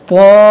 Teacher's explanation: کھڑا زبر ہے تو اس کو ہم کھینچیں گے 1 الف کے برابر